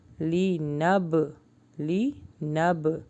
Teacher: bounce back یعنی قلقلہ ہوگا کیونکہ با کے اوپر جزم ہے